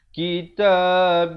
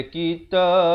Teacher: Lafzul jalalah datang sebelumnya ba berbaris kasrah, dibaca nipis 2 harakat.